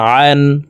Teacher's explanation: আইন হরফকে হালুকের মধ্যখান থেকে চাপ দিয়ে উচ্চারণ করতে হবে কারণ আইনের মাখরাজ হালুকের মধ্যখান থেকে হবে